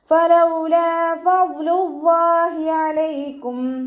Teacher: ഫലൗലാ ഫദ്ലുല്ലാഹി അലൈക്കും ലൈറ്റാക്കിയിട്ട് ഉച്ചരിക്കുക. നമ്മുടെ മേലെ മുൻപല്ലിൻ്റെ അറ്റം താഴെ ചുണ്ടിൻ്റെ ഉൾവശത്ത് നനഞ്ഞ ഭാഗത്ത് വെക്കുക കേട്ടോ.